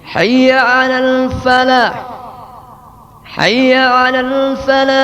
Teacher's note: Berikutnya memendekkan lam sehingga menjadi hayya 'alal falah